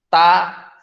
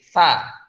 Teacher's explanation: Kalau ta kan padat ya, ta. Nah, kalau sa ada rongganya dikit.